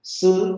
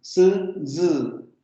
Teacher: La fricación ocurre en esta zona. La lengua sube hacia la zona de los alvéolos y la diferencia va a ser la vibración de cuerdas vocales.